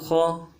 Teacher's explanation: موٹائی کے ساتھ اور جماؤ کے ساتھ خا کو ادا کریں گے